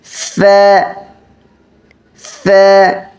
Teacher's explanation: নিচের ঠোঁট উপরের দাঁতের আগার সাথে লাগবে